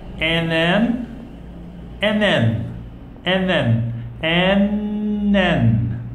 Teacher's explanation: When you link these two words, there is no D sound. You cannot make it sound like and those, because there is no those in this link.